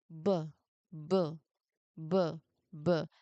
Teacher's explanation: There are vibrations. So this is voiced.